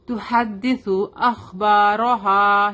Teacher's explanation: ہا شارپ ہوگا. Come from the middle part of the throat.